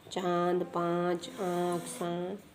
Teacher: अनुनासिक ध्वनियों के उच्चारण के समय हवा नाक और मुंह दोनों से निकलती है।